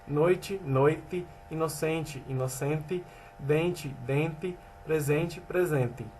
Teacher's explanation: o fonema T diante de E reduzido, ocorre também a permanência do fenômeno de despalatalização, uma vez que o fonema E é pronunciado com som de I com textos fonológicos finais de palavra, em posição átona.